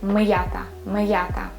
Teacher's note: M, ya, te, a, but I use apostrophe. I don't allow my ya sound influence on my m sound.